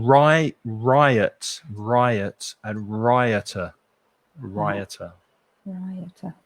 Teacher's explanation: it has a y sound in it that isn't there in the letter